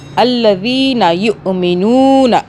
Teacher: یہاں پہ واؤ مدہ ہو رہی ہے، مدہ کا مطلب کھینچنا، ہم پیش کے ساتھ نون کو کیونکہ واؤ ہے کھینچ رہے ہیں ایک الف کے برابر